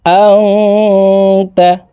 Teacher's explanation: ইকফাহ গুন্না নুন সাকিনের পরে ইকফার হরফ তা আসছে এ কারণে এই নুন সাকিনকে নাকের ভিতরে লুকাইয়া গুন্নার সহিত পড়তে হবে